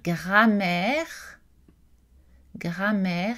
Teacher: la consonne nasale ici quand on a par exemple gramire grammaire il n'y a pas de voyelle nasale ça le a est une voyelle orale